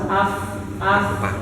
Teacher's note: tangan di sini di depan mulut kerasa ada napas AF AF itu itu berarti keluar napfas